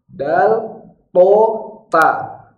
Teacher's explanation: Kalau di pangkal gigi yang dekat gusi namanya pangkal gigi, maka di situ keluar dal, to, sama huruf ta.